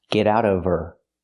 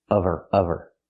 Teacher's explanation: Now we need the V sound in of because we don't pronounce the H in her. We link the sounds.